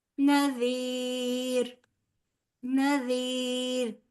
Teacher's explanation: نذیر نون بھی باریک، زال نہایت نرمی کے ساتھ، آگے یائے مدہ ہے لہٰذا 2 حرف برابر کھینچیں گے. زیر اور را باریک پڑا جائے گا کیونکہ را ساکن ما قبل زیر ہے.